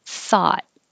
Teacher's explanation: and number five the th is unvoiced so just airflow and the o-u-g-h now sounds like ah thought and i'm going to hold my t a thought i